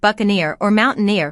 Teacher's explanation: That's because they've been borrowed from French and often keep the French pronunciation pattern. Words like buccaneer or mountaineer put the emphasis on the final syllable, which is something we often see in French-influenced vocabulary.